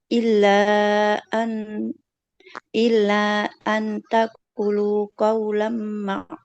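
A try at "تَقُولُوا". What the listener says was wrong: Illa an taqulu panjang. Roknya kan dhamma, ada wawunya maka harus panjang. Nah, PR yang pertama tempo ngajinya. Nah, nggak boleh cepat-cepat.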